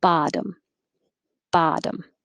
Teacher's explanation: these both look like o's but they don't sound like oh the first one sounds like ah and the second one sounds like uh